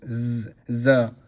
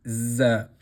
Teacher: a buzzing sound z and the sound of it comes from the bottom of the mouth. So here we see again the circle and it is pronounced z.